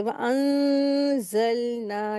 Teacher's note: नून की आवाज़ को नाक में छुपा करके गुन्ना करके पढ़ते इख्फ़ा करेंगे।